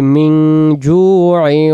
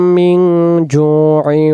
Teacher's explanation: নুন সাকিনের বাম পাশে খ অক্ষর পাওয়ার কারণে মিন হচ্ছে স্পষ্ট নুন সাকিন মিন, আর এখানে নুন সাকিনের বাম পাশে জিম অক্ষর থাকার কারণে এই শব্দটা উচ্চারণ করতে হচ্ছে বাংলাতে মনীষিকার মি আর অনুষ্কার মিং জু